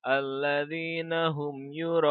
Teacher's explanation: Nah, di sini kita akan mendapati yang namanya mad wajib muttasil. Mad wajib muttasil ini mad yang harus dibaca sepanjang 6 harokat.